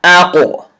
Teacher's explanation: you have to bounce the sound or echo the sound. That's called qalqalah.